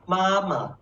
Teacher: It is called neutral. So the first one is stressed. The second one is not stressed. So it's very light.